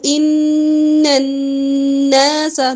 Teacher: نون مشدد ہے غنہ ہوگا